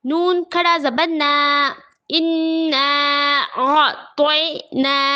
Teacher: نون پر کھڑا زبر ہے، برابر ہے حرف مدہ کے، تھوڑا کھینچ کر پڑھیں گے